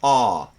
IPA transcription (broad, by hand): ɑː